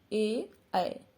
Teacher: ए कंठ तालु दोनों यूज हो रहे हैं ना